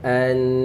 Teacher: Nak berhenti sebab nun ni ada sabdu. Jadi kita kena panjangkan dan bunyikan nun tu.